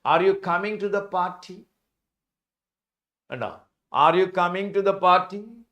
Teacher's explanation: a rising pitch at the end of the utterance is the standard of signal to a question that can answered with symbol yes. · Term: Rising tone